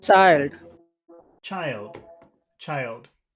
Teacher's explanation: this is like the whistle sound sh but there's a t in front of it so you start with your lip like you're going to say